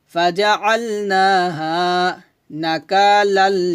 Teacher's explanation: এলামকে ধরবে, তবে এখানে গুণনা করা যাবে না। তানবিনের পর লাম আসছে, আমরা একটা জবর দিয়ে এলামের সাথে মিলায় পড়ব, এটাকে বলা হয় ইদগামে বেলা গুণনা